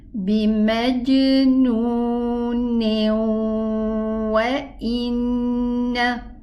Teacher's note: the Noon Sukun in the tanween merged into the letter waw, having a ghunna, and as we mentioned, that this waw, when it comes after the Noon Sukun, there will be a ghunna, and this is not complete merging. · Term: Idgham